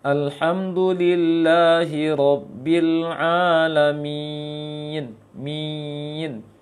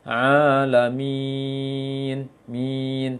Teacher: Sehingga bunyinya ke hidung juga bisa bunyinya, dan makhrajnya tengah lisan ke langit. Seharusnya dibiarkan saja lembut lisan itu, tidak terangkat lisan. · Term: mad kasroh